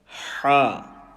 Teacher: Letter Ha, from the middle of the throat.